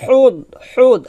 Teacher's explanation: হাটা চিকন করে বলতে হবে গলার মাঝখান থেকে চাপ দিয়ে